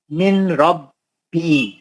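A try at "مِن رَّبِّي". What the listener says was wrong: نون نہیں پڑھتے نا. نون ساکن کا ادغام بلا غنہ حرف را.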